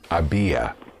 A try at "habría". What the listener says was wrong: The R is important. Habría, because without the R, había would be I had.